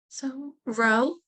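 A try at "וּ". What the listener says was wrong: It just, ooh, there's just the ooh. Don't make it harder than it is.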